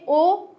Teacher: क्या सूत्र बनेगा, ओ दो तो कंठोष्टम, यानी कि ओ और औ, ओ और औ दोनों कंठ और ओष्ठ, इन दोनों से उच्चारित किए जाएंगे। ओ हमारा होठों का शेप चेंज हुआ थोड़ा सा, और ध्वनि जो निष्कासित हुई है वो कहाँ से हुई है, कंठ से हुई है, तो इसके उच्चारण स्थान क्या कहे जाएंगे, कंठ और ओष्ठ।